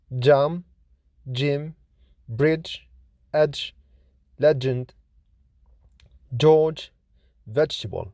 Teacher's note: J is voiced, lenis, palato-alveolar, affricate consonant